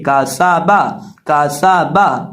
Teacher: اب یہاں سین کو پڑھتے وقت سین کے اندر سیٹی کی آواز پیدا کر کے پڑھیں گے